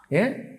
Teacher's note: ఏ అన్నప్పుడు కంఠము తాలువు రెండు కలిపి పనిచేస్తాయి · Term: కంఠ తాలువు